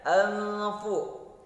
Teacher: nun sukun bertemu fa. Ya, itu hukumnya adalah ikhfa.